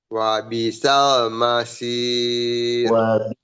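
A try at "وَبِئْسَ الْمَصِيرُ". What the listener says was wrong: Wabi alifnya jelas, harus jelas. Sukun. Wabi sal.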